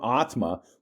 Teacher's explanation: in the form atma, the first is long and the second one is short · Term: long and short